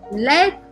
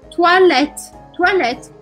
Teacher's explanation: Vou parar o som no t.